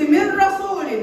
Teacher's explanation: انا لقيت برضه النون كانها مش موجودة، ورحت من الميم اللي تحتها كسر على الراء على طول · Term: ادغام بغير غنة